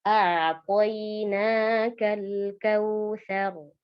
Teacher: Salah satu sifat lam ini adalah bainiyah ya. Jadi mengalir sedikit, bukan qalqalah ya. Sering kesalahan terjadi di lam sukun ini adalah mengkolkolahkannya.